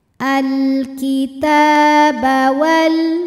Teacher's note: panjang dua harakat alitab Wal ada hukum alif lam qamariah sebab alif lam menghadapi huruf qamariah yaitu ha cara bacanya alif lam dibaca jelas atau disebut dengan izhar